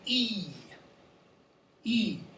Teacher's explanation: So this is high in front. So your tongue is at the front of your mouth and it's up high.